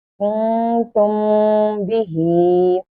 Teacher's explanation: Here is Mim Sakina, and after Mim Sakina, here comes Ba. That means here is Ikhfa Shafawi, and we will pronounce this letter with Gunna.